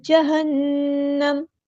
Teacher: نون پہ غنہ ہو رہا ہے، غنہ زمانی تو ایک الف کے برابر رکیں گے